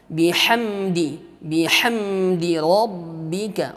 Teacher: pada mim sukun di sini, ya, ini izhar syafawi. Dia tidak berdengung, dia tidak samar, jelas